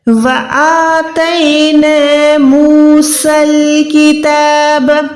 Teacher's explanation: الف کو لمبا کرنا ہے کیونکہ یہاں پر کھڑی زبر ہے. وَآتَيْنَا مُوسَى الْكِتَابَ، یہاں پر دیکھیں سین کے بعد الف بھی خالی ہے، یا بھی خالی ہے، تو آپ سمجھے کہ یہاں پر یا الف نہیں ہے، ہم نے ان کو ادا نہیں کرنا.